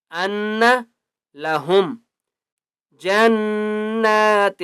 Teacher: نون کے اوپر تشدید ہے، غنہ کریں گے